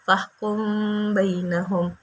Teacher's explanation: Mim sukun bertemu dengan satu huruf saja, yaitu huruf ba. Maka dibaca berdengung dan samar, dan hukumnya ikhfa syafawi.